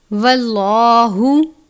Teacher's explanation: لفظ اللہ کے لام سے پہلے زبر ہے اس لیے لام کو پر پڑھتے ہیں اور اس طریقے کو تفخیم کہتے ہیں، یعنی پر کر کے پڑھنا۔